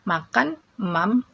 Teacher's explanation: Ada assimilation, n hilang dan k berubah ke m, karena menyesuaikan bunyi hidung atau nasal